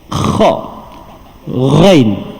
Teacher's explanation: Okey, dua huruf yang duduk bahagian halqum, tapi bahagian paling atas iaitu dua huruf tu kha dan juga ghain. Nampak tak persamaan kedua-dua huruf tu dia ada bunyi berkeladak sikit